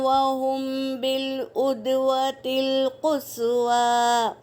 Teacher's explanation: میم ساکن کے بعد با آیا ہے تو یہاں پر اخفا اور غنہ کے ساتھ پڑھیں گے